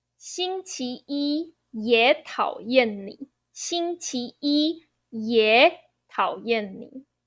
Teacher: 星期一也讨厌你,星期一也讨厌你. The 也 third tone, when I'm saying in this phrase, I pronounce it second tone, 也. That is due to a tonal modification in Mandarin, which is a third tone rule.